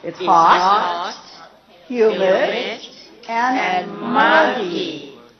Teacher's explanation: three things in a series the first two Rising intonation but the third one Rising falling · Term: series intonation